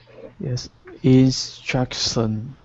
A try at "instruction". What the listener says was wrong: Just that SH sound in shins, but really good.